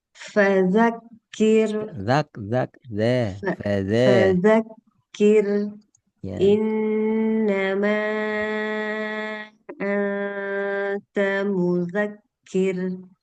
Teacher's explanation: lembutkan sedikit lagi ee ro supaya enggak seperti R Indonesia seperti kita ucapkan ramai-ramai, ribut-ribut, terlalu keras.